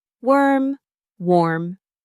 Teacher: Remember, worm is neutral and central. Don't round your lips too much. Warm is the rounder one.